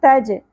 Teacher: جیم ساکن پہ قلقلہ ہوگا